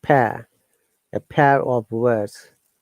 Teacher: pair there is e and ah sound together